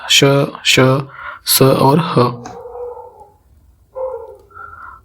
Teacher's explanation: तो ऊष्म व्यंजन में बेसिकली क्या होता है कि एक जैसे इनके उच्चारण के समय या बोलते समय एक गर्म वायु जो है निकलेगी मुंह से, और इनके उच्चारण में जो श्वास है उसकी प्रबलता होती है।